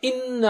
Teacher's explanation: انا اور وہاں پر نون پر غنہ ہے, 2 حرکت ہوگی ناک سے آواز. انا اور مد لہر والا ہے, یعنی آپ 2 حرکت سے کھینچ سکتے ہیں اس کو یا زیادہ بھی, لیکن ہم 2 حرکت کھینچیں گے.